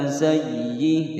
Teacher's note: sayyi ditekan, tidak boleh digunnahkan, tidak boleh membaca sayyi'atau sayyi, tidak boleh ya, ditekan saja.